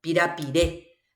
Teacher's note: ¿Dónde recae la fuerza de pronunciación? En la E.